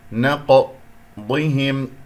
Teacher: فبما كسرت الباء، احرص عليها، فبما نقضهم، القاف مقلقلة قلقلة صغرى فانتبه لها، ولا تنسى بأن القاف هي من حروف الاستعلاء، مرتبتها هنا ساكن مرتبة الرابع، إذا أقلقل ولا أنسى التفخيم. نقضهم، الضاد هنا مفخم مرتبة أخيرة مرتبة خامسة